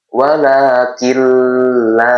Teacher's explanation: nunnya dilebur kemudian masuk kepada huruf lam tapi tidak disertai dengan dengungan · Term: idgam bila guna, idgham bila gunah